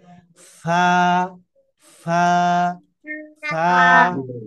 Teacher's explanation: এক আলিফ টেনে পাতলা করে উচ্চারণ করতে হবে